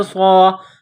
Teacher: صاد میں سیٹی کی آواز پیدا کرنا ہے، صاد کو موٹا پڑھنا ہے